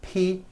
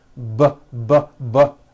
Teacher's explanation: the only difference is my vocal chords are either vibrating or they're not vibrating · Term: voicing